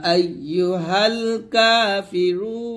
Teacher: আমরা রুতে তিন টান দিয়ে নুনটা সাকিন করবো